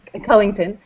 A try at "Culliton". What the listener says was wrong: There's just no G, so it's Culliton.